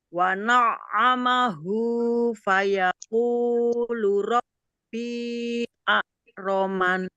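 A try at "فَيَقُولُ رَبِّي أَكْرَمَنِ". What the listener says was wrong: Ya, insyaallah.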